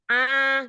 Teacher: huruf hamzahnya itu ketika fathah terdengar kayak masuk hidung. A gitu. A, dan tidak tebal.